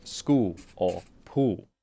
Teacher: In South Australia, they might drop the L entirely and sound more like school or pool.